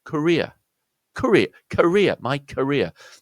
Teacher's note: The first syllable is, rather than the ko sound of courier, is the sound of a schwa.